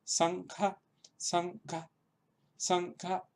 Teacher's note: la lengua adopta la postura correcta de la n velar